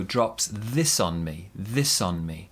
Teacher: the s and the o join together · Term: linking